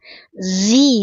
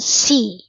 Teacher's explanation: Auzi'ni, zainya ujung lidah sentuhkan ke pangkal gigi seri bagian bawah. Zi bukan si, napasnya tertahan jahar.